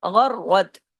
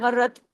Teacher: र की आवाज दो दफा आनी चाहिए। गैन और र दोनों हैवी भी पढ़े जाएंगे और र को डबल भी पढ़ा जाएगा। सख्ती से जोड़ा जाएगा। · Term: डबल र